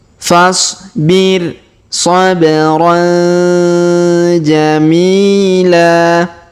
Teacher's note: Huruf mi kita panjangkan 2 harokat karena ya sukun di depannya